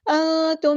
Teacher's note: نون ساکن کی آواز کو ہم چھپا دیں گے کیونکہ نون ساکن کے بعد تا ہے، اخفا ہوگا